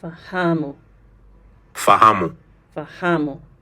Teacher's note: Notice the stress again on the next to last syllable.